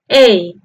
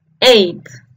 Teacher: de la e el fonema de la e del número ocho se pronuncia con la boca un poco más cerrada que la e del número siete para pronunciarla ponemos nuestros labios en forma de una sonrisa